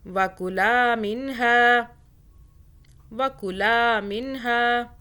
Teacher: کلا کو لا کو کھینچا، آگے الف آ رہا ہے